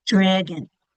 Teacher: That second syllable gets weaker, the vowel gets lazy, and it doesn't make its pure sound. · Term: schwas